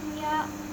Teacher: Wujuh ya idgham biguna karena ada tanwin domah bertemu dengan huruf ya. Cara bacanya dimasukkan dengan huruf ya sambil berdengung.